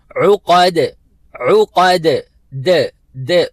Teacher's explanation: دال کے اوپر قلقلہ کرنا ہے، مطلب آواز کو حرکت دینی ہے، تھوڑا سا جھڑکے کے ساتھ اس کو ادا کرنا ہے تاکہ ڈبل آواز آئے. · ایکو ساؤنڈ جس کو کہتے ہیں، ڈبل آواز، وائبریشن والی آواز دال کے اوپر ادا کرنا ضروری ہے. تو ہم پڑھیں گے عقد عقد، د د، عقد نہیں پڑھیں گے بلکہ عقد عقد.